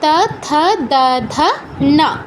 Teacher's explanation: জিহ্বার অগ্রভাগ মানে সামনের অংশ উপরের পাটির দাঁতে স্পর্শ করে হচ্ছে উচ্চারণটা করতে হয়। আপনারা খেয়াল করে দেখবেন, তা উচ্চারণে জিহ্বার অগ্রভাগ উপরের পাটির দাঁতে টাচ করছে। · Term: ত বর্গীয় অক্ষর